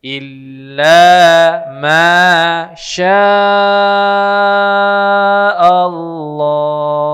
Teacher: Illa 2 harakat, ma 2 harakat, sya baru 5 harakat. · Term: mad wajib muttasil